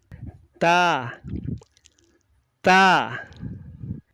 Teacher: Dan ini tadi ketika kita melafadzkan huruf ta, yang kita rasakan sifatnya yang muncul syiddah dulu, baru hames, berdesis. Jadi suara tertahan dulu, baru ada desis setelah suaranya tertahan. · Letakkan telapak tangan atau punggung telapak tangan di depan mulut sambil membunyikan huruf ta kita rasakan nafas atau desis yang keluar